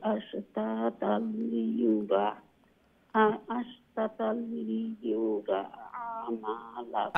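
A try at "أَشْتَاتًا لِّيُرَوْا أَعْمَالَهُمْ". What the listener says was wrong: আশতাতাল লিয়ুরাও, রাও এন্ডে দি ওয়াও শোনা যাইতো, আশতাতাল লিয়ুরাও আমালাহুম,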